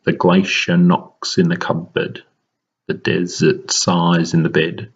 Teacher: There's what's called an anapestic. So there's a double unstressed beat towards the end of the line. And so it sounds, you might have detected it when we were reading it initially, like a bit of a nursery rhyme.